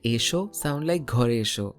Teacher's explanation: notice how Ghare and esho sound like Gharesho while a, la, maison becomes alamaison